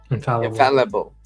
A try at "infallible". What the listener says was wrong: You keep on saying infallu. You're doing this eu thing when it's just